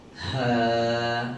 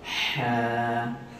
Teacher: Huruf ha simpul ni, sebutan ataupun anginnya itu lepas.